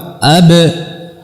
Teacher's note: dengan merapatkan, dengan menguatkan antara dua bibir, merapatkan dengan kuat